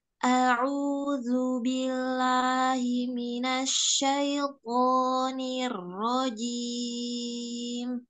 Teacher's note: jangan a'uzu, tapi huruf dzalnya ditampakkan